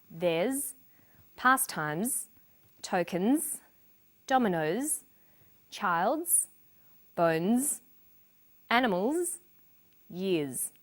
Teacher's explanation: after voiced consonants such as b, d, g, l, v, v, n, and after vowels and diphthongs, the final S is pronounced z